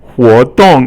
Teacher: it's actually second tone, 活, and then 动 is actually 轻 声, it doesn't have a tone. Usually it's fourth tone here, but 活 动, I guess it becomes silent, the silent tone with nothing there.